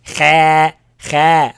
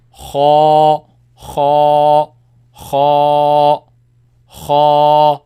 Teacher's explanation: Ends with alif. Make it long, but it's heavy sound, not light. Kha, kha, kha, kha, kha. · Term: heavy letter